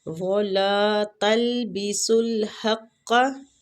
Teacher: سین باریک سیٹی والا لام کے ساتھ ملائیں گے